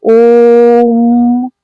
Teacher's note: जिन स्वरों के उच्चारण में दीर्घ स्वर से भी ज्यादा समय लगता है उसे प्लुत स्वर कहते हैं।